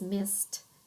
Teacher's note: And missed is spelled pretty phonetically, although we can see that she kind of understands about the ed ending because missed, we actually hear a t sound instead of a d sound